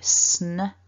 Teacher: We start off with our sn. So that hissing S through to a n, which is a nasal sound. It's up there in your nose.